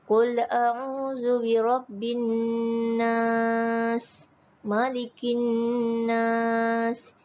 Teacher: dengan menekankan suara pada huruf mim dan Nun disertai dengan dengung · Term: wajibul ghunnah